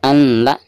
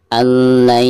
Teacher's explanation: Jadi bukan dibaca an la ya, tetapi nun sukun tersebut harus dimasukkan ke huruf lam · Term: idgham bila gunah